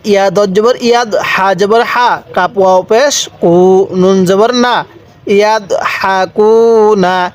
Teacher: পেশের পরে ওয়াও সাকিন এক আলিফ টানতে হবে। এই জায়গার মধ্যে যদি আপনি বুঝতে পারেন সব জায়গার মধ্যে দেখুন এক আলিফ টান।